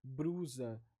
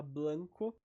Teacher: o rotacismo, que é quando a gente faz a troca basicamente entre L e R, mas não só isso, é outras sibilantes também, mas principalmente entre L e R.